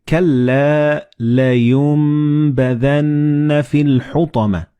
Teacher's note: the noon and ba, they will be assimilated together and you will pronounce them as meme